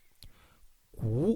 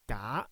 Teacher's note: 'gaa1' with no puff of air is 'g' 'kei4' has a puff of air, so it is 'k' 'gu2' has no puff of air so it is a 'g'